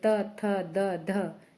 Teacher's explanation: वर्ण जो है वह दंत्य है जैसे त थ द ध इनका उच्चारण स्थान देखिए जीवा दांतों को स्पर्श करती है